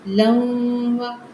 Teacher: तनवीन को वाव के अंदर मिलाएंगे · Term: इदगाम मा गुन्ना